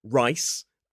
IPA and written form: raɪs (rice)